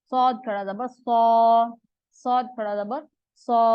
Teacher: ہلکی سی سیٹی کی آواز تاکہ سین اور صاد میں فرق لگے